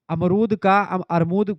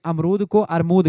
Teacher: इसमें आप देखते हैं म और र का स्थान बदल दिया गया है। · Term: ध्वनि विपर्य